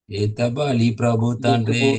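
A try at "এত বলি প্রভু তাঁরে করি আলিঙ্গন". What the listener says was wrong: Now it is again not na, Tandre. Tare. Taure. Etabali Prabhu Tare Kari Alingan.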